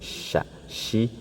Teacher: menyebar ya di dalam mulut gitu karena tertahannya ee makhraj ya syin dengan ya dengan Jim itu satu makhraj yaitu di tengah lidah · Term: tafasyi